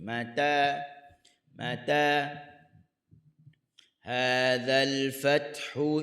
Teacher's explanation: huruf ta berada di hujung lidah di gusi tempat tumbuh gigi.